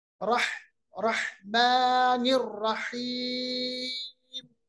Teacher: हा जो है ये वस्त हलक से अदा होता है, वस्त हलक यानी दरमियान हिस्सा जो हमारे गले का है उससे अदा होता है